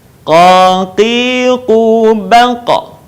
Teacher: Huruf ini keluar dengan menyentuhkan pangkal lisan kita dengan langit-langit bagian belakang. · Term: huruf qa